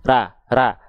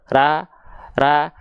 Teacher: Pangkal lidah naik ke arah langit-langit, inilah yang disebut dengan isti'la alias PLN tadi.